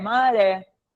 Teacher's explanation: Oxítona terminada com e. E o ré é o tônico